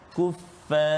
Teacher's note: Ra saja tebal, jangan ajak fa tu.